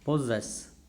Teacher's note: Now in this word P-O-S-S-E-S-S, the medial double S are being pronounced as Z, and the end double S is being pronounced as Sa